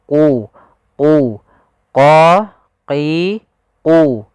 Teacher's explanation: Pada lafal qulna bitu, huruf qaf di sini diwarnai dengan warna biru agar kita membacanya agak tebal untuk membedakan antara huruf qaf dengan huruf kaf. Huruf qaf pangkal lidah kita harus kita angkat sehingga dia makhraj daripada huruf qaf itu pangkal lidah dengan langit-langit atas, maka dia menempel.